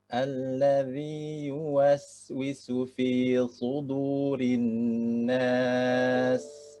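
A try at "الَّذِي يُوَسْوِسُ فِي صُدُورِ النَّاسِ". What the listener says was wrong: masih tertahan sin-nya. Tertahan. Sa, si, ya.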